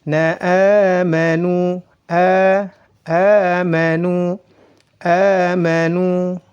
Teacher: Na amanu, amanu, amanu, mad badal, mad badal. Illalladzina amanu, hanya dibaca dua harakat di dalam bacaan riwayat Hafs an Asim min Tariq Asy-Syatibiyah. Jadi setiap mad badal itu dibaca 2 harakat.